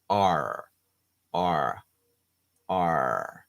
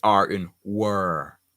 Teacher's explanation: So what happens is that the R in world has to be really back, R, R, R, you can see all of my throat, R, but then the tongue goes back.